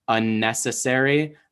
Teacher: I'm also intensifying that N sound in unnecessary so that you don't think I'm saying a necessary